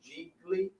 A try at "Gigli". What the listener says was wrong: I think the second G is silent. I think it's Geely.